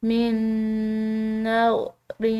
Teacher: او نذرتم من نذر، یہاں پر نون ساکن کے بعد نون مشدد ہے تو اس کے ساتھ ادغام بالغنہ، یعنی کہ اس کو غنہ کے ساتھ مدغم کر کے پڑھا جائے گا